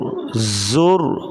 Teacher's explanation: زا سیٹی کی آواز سختی سے پڑھا جائے گا.